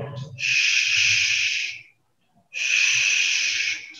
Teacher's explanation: can you see how the air passed by the tongue and the alveolar ridge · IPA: ʃ